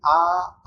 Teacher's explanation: आ बोलते हैं तो पूरा खुलता है मुंह